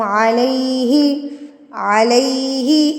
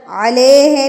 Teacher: अले ए नहीं लगाना इ लगाना